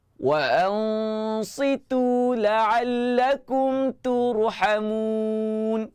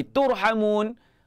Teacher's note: Nipiskan ta tetapi ra tebal.